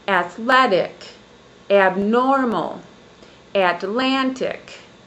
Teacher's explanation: On the second syllable, my voice goes up in pitch or frequency or highness level and up in volume. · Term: syllable stress